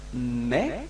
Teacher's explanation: you don't pronounce the final S